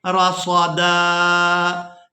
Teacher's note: اب یہاں پر آیت مکمل ہو گئی تو ہم نے وقف کرنا ہے. وقف کی صورت میں دال کو ایک الف مقدار کھینچ کر ادا کریں گے